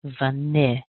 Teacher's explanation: And notice also I'm putting more strength on that N sound because that's where our strongest syllable is. Vanilla. And then we're going to end up with another weak syllable, which means I'm taking off that A and I'm going to put that same sound in.